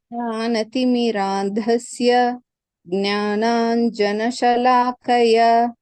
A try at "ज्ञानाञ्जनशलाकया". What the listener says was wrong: There is a dirga at the end. Jnananjanashalakaya.